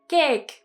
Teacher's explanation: take the word cake in katakana it would be keke now i've heard a lot of japanese speakers saying cake like a long flat a sound